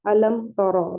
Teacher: تو علم حمزہ حلقی ہے، لم میم ساکن کے بعد تو آ رہا ہے تو اظہار شفوی ہوگا. علم تر، را کو ہیوی پڑھیں گے کیونکہ زبر کے ساتھ ہے